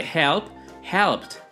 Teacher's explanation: Se pronuncia como T cuando el verbo termina en un sonido sordo, es decir, sin vibración en las cuerdas vocales